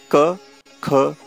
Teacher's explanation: spoken with the tongue and the inner part of throat touching each other